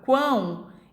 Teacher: Que é onde esse ão, ele sai, né? O ar sai tanto pela boca quanto pelas fossas nasais. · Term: tritongo nasal